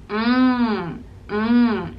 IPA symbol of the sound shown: ŋ